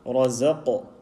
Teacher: Now this qaf is carrying a sukoon, a permanent sukoon. We have to apply the qalqala sound.